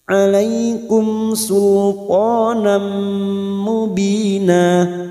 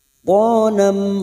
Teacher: fathah tanwin yang bertemu mim idgham biguna siap masuk dan mendengung masuk pada huruf mim dan mendengung selama 2 atau 3 harakat